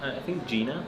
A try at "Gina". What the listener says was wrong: You say it in like almost Arabic. You say Jenna. Gina.